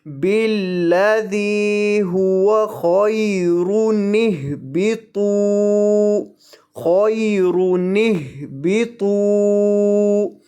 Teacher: ان کے درمیان میں نون قطنی کا اضافہ کر دیا جائے گا اور حمزہ کو گرا دیا جائے گا